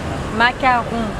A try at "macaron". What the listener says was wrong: Yes Once again it's the French R you know Macaron Yes yes yes the French R